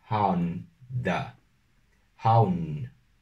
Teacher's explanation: hay que cerrar la boca, hay que pronunciar la / ʊ /